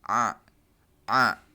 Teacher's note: untuk huruf a dan H itu ditengah ya di tengah di tengah leher kita